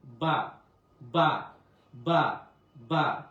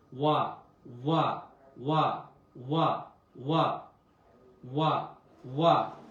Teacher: বা বলতে 2টা ঠোঁট একসাথে হবে, মিলে যাবে। আর ওয়া বলতে 2 ঠোঁটের মাঝখানে একটু ফাঁকা থাকবে। · আর ওয়াও বলতে ঠোঁটের মাঝখানে ফাঁকা থাকবে, ঠোঁট গোল হবে।